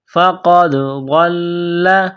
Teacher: غاد کو موٹا کرنا ہے، غاد کو لام کے ساتھ ملانا ہے، لام مشدد ہے · قاف ہے نقطوں والا بڑا قاف، اس کو موٹا کرنا ہے